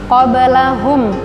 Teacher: ba mantulnya ringan, qalqalah sugro, bukan qobe tidak ditambah ka di ujung, qabalahum minal, mim mati bertemu dengan mim, dengung, idgham mimi, idgham mislain.